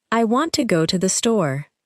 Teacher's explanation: the speaker is more likely to stress want, go, and store. The two uses of to become much weaker. The sentence may sound closer to, "I want to go to the store." The word to often sounds like to, and want to may sound like wanna in informal speech.